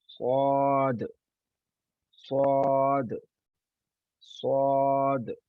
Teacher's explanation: जुबान हमारी सामने वाले नीचे वाले जो दांत हैं सनाया, नीचे वाले सनाया उनके साथ मिली हुई है, और हमने मुंह को गोल किया